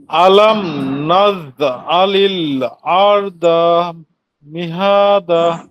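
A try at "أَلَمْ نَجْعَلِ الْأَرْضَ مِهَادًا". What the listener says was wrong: হ্যাঁ মাশাআল্লাহ।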